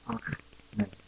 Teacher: like a ch sound from the throat